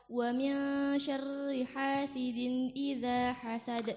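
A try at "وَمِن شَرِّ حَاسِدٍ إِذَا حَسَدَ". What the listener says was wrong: Ini masyaallah sempurna, apa jelas huruf, jelas makhrajnya.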